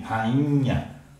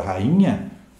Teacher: Então, na pronúncia, o I não está sozinho. Quando eu falo a palavra rainha, o I está nasalizado, como se tivesse esse N formando um dígrafo.